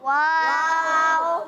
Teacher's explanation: वाव की अदायगी होंठों से होती है, तो इसको ख्याल रखना है कि वाव में होंठ ही लगे हैं, होंठों के अलावा अदायगी।